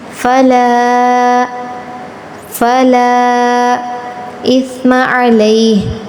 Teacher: سیٹی کی آواز نہیں آنی چاہیے